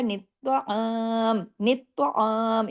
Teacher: इसमें त को दो मर्तबा पढ़ना है हैवी लेटर करके पढ़ना है।